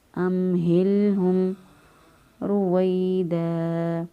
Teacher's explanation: را کو پر پڑھیں گے کیونکہ را کے اوپر پیش ہے